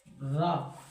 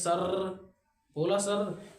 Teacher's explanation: रा को तुम बोलोगे तो तुम्हारी जीभ लुढ़कती हुई नीचे की तरफ आ रही होगी, इसलिए इसे क्या बोलते हैं, लुंठित व्यंजन या फिर प्रकंपित। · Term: प्रकंपित व्यंजन